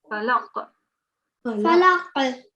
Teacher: you have to have a jerking sound at the end, especially because if you're pausing with the qalqala, it will be a bit stronger than it was in the middle we had earlier.